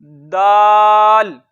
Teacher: जुबान की नोक और ऊपर के दांतों की जड़ से।